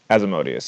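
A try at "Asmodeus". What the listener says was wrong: No, because it's not an I.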